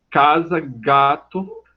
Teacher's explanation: as velares então mais lá para trás o dorso da língua é o articulador ativo · O dorso da língua é o articulador ativo, toca ou vai na direção do véu palatino, também chamado de palato mole.